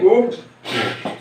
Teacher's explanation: ओष्ठ होठ वाले, होठ गोल होते हैं